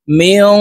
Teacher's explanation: গুন্না নুন সাকিনের পর ইকফার হরফ কফ আসছে এই কারণে এই নুনকে নাকের ভিতরে লুকাইয়া গুন্নার সহিত পড়ব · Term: ইকফা গুন্না